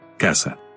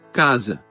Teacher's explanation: La pronunciación de la S intervocálica es sorda en el español y sonora en el portugués